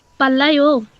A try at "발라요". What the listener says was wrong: সুন্দর, পাল্লা। আচ্ছা, পাল্লায় ওকে আবার টান দিয়েন না, পাল্লা টান দিলে শুনলে ওকে মানে একটু প্রশ্ন বুঝায়। আপনি নর্মাল টোনে বলবেন পাল্লায়ও।